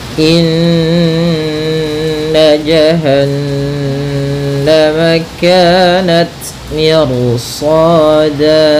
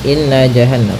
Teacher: Pada bacaan inna di sini ada hukum tajwid, yaitu gunnah, yaitu cara membacanya adalah kita menahan suara nunnya ya terlebih dahulu sepanjang 2 harakat lebih sedikit ya, kemudian baru kita baca janya. Inna nah tidak boleh atau jangan dilangsungkan gitu ya, jangan inna jahannam, nanti kurang sempurna dalam menahan gunnahnya.